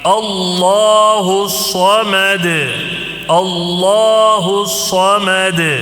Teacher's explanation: اللہ کے لام کو موٹا پڑھنا ہے